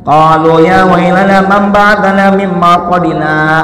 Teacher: ada jeda, berhenti sejenak, tapi ketika melanjutkan tidak bernapas lagi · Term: saktah